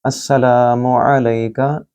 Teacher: लाम को लंबा करें क्योंकि अलिफ मद है। आइन को गले से बोलें और लई का लई जो है वो या लीन है।